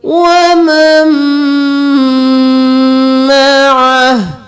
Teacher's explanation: यहाँ पर हम नून को छोड़कर मीम को मीम के साथ मिलाएंगे और मीम पर गुन्ना भी करेंगे। वमन मअह, यहाँ पर वक्फ हो जाएगा तो हाँ साकिन हो जाएगा।